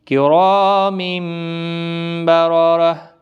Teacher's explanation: را الف مدہ ہے، تنوین کے بعد متحرک با پھر، تو تنوین کی آواز میم میں بدل جائے گی